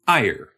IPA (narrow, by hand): aɪ̯ɚ